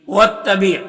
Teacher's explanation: تائے مشددہ ہے تو پیچھے والے متحرک حرف واو سے مل کر پڑھا جائے گا